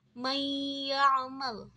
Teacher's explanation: huruf nun dalam kata Man itu diidhamkan ke dalam huruf ya sehingga kita bisa mendengar dengungan ghunah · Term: gunnah